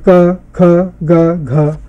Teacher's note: ये कंठ ध्वनियां हैं, स्पर्श हैं।